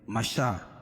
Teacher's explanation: شین پر کھڑا زبر قائم مقام الف مدہ کی، اس کو 1 الف کے برابر کھینچ کے پڑھیں گے